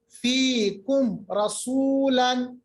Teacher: فیکم آواز نکالی میم کی اور آگے بڑھ گئے. کوئی دیری نہیں, کوئی منہ میں آواز نہیں, کوئی غنہ نہیں, کوئی ناک میں آواز نہیں. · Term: اظہار